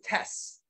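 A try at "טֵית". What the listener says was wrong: Tet, you said s though.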